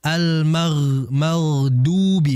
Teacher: Dan lihat huruf ghain, setelah huruf ghain adalah huruf dad. Maka huruf dad ini adalah huruf yang keluar dari samping, kiri maupun kanan. Maka jangan sampai seperti dal.